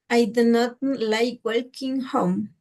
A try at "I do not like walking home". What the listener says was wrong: Lo mismo pasa con walking, ¿verdad? No es walking porque la L no existe, sería walking home.